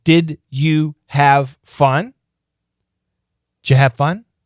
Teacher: Did you? The reduction is ju or j.